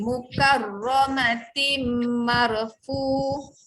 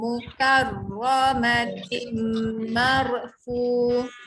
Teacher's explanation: Okey, ayat 13 14 kita sambung, tanwin tu jumpa dengan mim kat bawah. Tin dibaca tim, masuk bunyi mim. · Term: tanwin jumpa mim